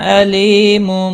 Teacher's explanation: لی یا مدہ ہے، ایک الف کے برابر کھینچ کر پڑھنا ہے